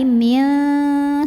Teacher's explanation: Karena nun sukun bertemu dengan huruf ta, maka nun sukun ini bunyinya samar-samar, siap-siap ke ta disertai dengungan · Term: ikhfa aqrab